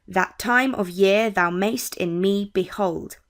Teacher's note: So we see a pattern of one weak syllable and one stress syllable. And this repeats throughout the line. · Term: iambic